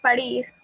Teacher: La palabra París es una palabra aguda, ya que su sílaba tónica está en la última sílaba.